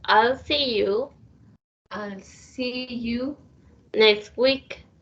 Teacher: here when we say next week, we didn't pronounce the T. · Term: sounds are lost